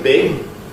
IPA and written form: b̥ɪg̊ (big)